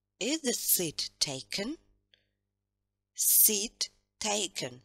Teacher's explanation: Два ударных слога, интонация вниз.